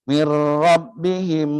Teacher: Dia memasuk ra tapi dia tidak membacanya dengan dengung.